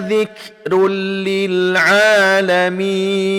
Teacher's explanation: tanwin bertemu dengan huruf la, maka dia tidak didengungkan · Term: idgham bila gunnah